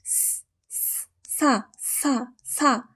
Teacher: 앞니 바로 뒤, 윗잇몸, 잇몸 소리, 치경음입니다.